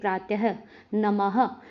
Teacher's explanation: विसर्ग का उच्चारण हल्के ह की भांति प्रतीत होता है